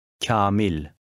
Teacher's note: The long A affects the sound of a preceding K, making it sound softer. Somewhat like kya or cha.